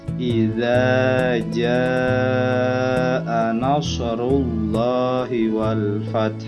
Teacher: Tandanya alif lam qamariyah yaitu huruf alif lam dibaca dengan jelas.